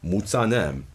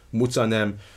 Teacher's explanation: not with an aspirated sa but with a voiceless non-aspirate